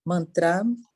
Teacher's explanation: o acento é no primeiro A